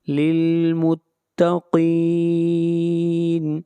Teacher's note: قاف کو موٹا پڑھیں گے، قاف حروف مستعلیہ میں سے ہے اور للمتقین کے اوپر مد عارض وقفی ہوگی، اس مد کی مقدار 3 الف ہے۔